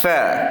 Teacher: Kita akan keluarkan angin berserta dengan suara pada huruf tha. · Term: hamas